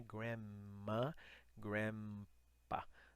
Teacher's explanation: na americana é como se fosse só um M